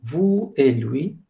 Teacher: devant la conjonction « et », il n'y a pas de liaison